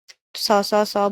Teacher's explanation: स स स बोलने में हवा ज्यादा निकलती है